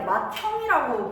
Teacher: 디귿이랑 히읗이 만났으면은 티읕이 되겠죠. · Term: 축약